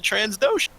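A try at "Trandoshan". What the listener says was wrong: Transdoshan, like he changed his gender. No, there's no S.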